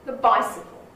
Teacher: the hasn't got a stress that bicycle has